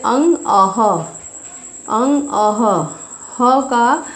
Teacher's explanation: विसर्ग का उच्चारण हम ह के रूप में करते हैं।